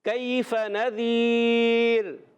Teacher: یہاں را کو باریک رکھیں گے کیونکہ را ساکن ہوا اس سے پہلے یا ساکن آ رہا ہے کیف نذیر كيف نذير کیف کاف کو باریک رکھنا ہے کیف